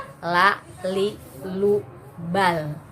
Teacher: Seharusnya makhraj la itu adalah ujung lidah dengan gusi-gusi. Jadi di dalam, tidak dikeluarkan, bukan alhamdu tapi al.